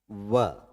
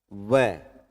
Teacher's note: जीवा जो है नीचे वाले दांतों को टच कर रही है, और होठ भी हरकत में आ रहे हैं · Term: दंतोष्ठ